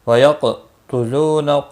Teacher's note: کا لام باریک پڑا جائے گا زیر کی وجہ سے۔ وَيَقْتُلُونَ قاف ساکن پر قلقلہ ہوگا، مستعلیہ بھی ہے، پر پڑا جائے گا ، لو واو مدہ ہے، ایک الف کے برابر کھینچ کر